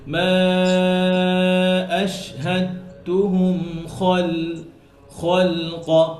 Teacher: খ মোটা হরফ লাম পাতলা আবার কফ মোটা